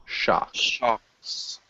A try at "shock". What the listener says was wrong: Yeah, and no S at the end.